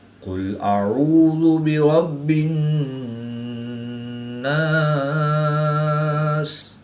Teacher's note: حمزہ کو حلق کے نیچے والے حصہ سے اور عین کو حلق کے درمیان والے حصہ سے ادا کر کے پڑھیں گے۔